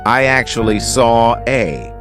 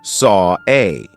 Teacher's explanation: saw a the reason why we're doing an here is because we have the or sound of Saw and then an a we have another open vowel sound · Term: intrusive R